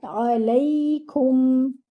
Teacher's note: your ain should be 1 count from its makhraj, that is the middle part of the throat